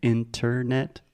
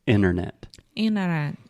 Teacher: we do not say the first T. We do not say internet.